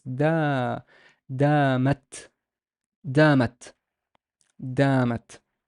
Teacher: There's a dal, there's a fatha, but I know it by the alif. It's a long ah sound, so it's da, damat, damat, damat.